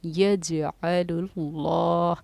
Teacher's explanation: جزم سکون تھا جیم پر تو ہم نے یہاں پر خلخلے کا قاعدہ جاری کیا، یجعل اللہ، کیونکہ لفظ اللہ کے لام سے پہلے پیش آ رہا ہے تو ہم نے اس کو پڑھا ہے موٹا، اس لفظ اللہ کے لام کو اللہ والا موٹا ہم نے پڑھا ہے۔